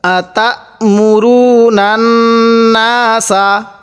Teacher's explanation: এই নুনের সাথে নান এবার নাকের বাঁশি দ্বারা গুন্না করব আমরা যখন দেখব মিম এবং নুনের উপর তাজদিদ আছে তখন আমরা সেখানে নাকের বাঁশি দ্বারা গুণনা করব